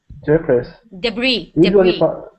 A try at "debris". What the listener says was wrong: Debris. We don't say the S. This is debris.